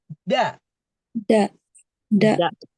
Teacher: Ee cuma bedanya dal itu tidak ada hembusan nafas.